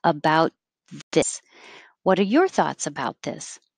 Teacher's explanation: you don't have a good t on bout because you're making a th right after it